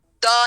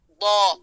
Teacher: زبان کی سائیڈ داڑوں کے ساتھ ٹچ ہوگی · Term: ضاد